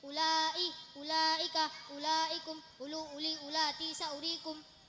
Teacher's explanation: U-nya dibaca pendek, waw dianggap tidak ada. U yang dibaca pendek di Al-Quran ada 7, yaitu ulai, ulaika, ulaikum, ulu, uli, ulati, saurikum.